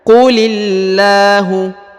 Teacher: sebelum huruf lafzul jalalah terdapat harokat i ya, huruf berharokat i, maka dibaca tipis